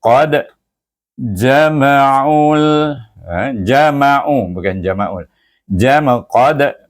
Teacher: dal ada huruf qalqalah dan dia mati · Iaitu baca dia dengan qalqalah sughra. Lantunannya perlahan, maksud sughra tu perlahan.